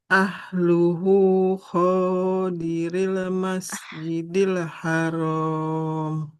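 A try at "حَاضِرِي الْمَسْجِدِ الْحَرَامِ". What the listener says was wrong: Nah, bukan hadiril, nggak ada titiknya. Huruf A ya. Hadiril masjidil haram.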